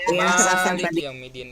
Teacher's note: Tadi panjangnya lebih 3 harkat. Harusnya 2 harkat.